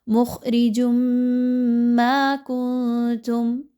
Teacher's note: تنوین کی آواز کو میم کی آواز کے ساتھ مرج کرنا ہے، مکس کرنا ہے، مدغم کرنا ہے، اور پھر غنہ بھی کرنا ہے، یعنی تھوڑی دیر ناک میں روک کے بھی رکھنا ہے۔